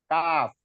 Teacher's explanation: Maju sedikit dari qaf itu kaf.